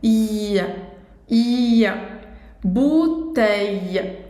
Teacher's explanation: Um novo som bem diferente do português, porque tem esse eia, como se fosse um i longo. Eia. Bouteille.